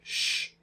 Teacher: sh is voiceless because we can't feel the vibration